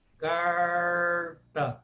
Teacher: a língua que está estendida ela precisa enrolar e se voltar para o céu da boca por isso que ela chama cerebral porque ela se volta para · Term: sons cerebrais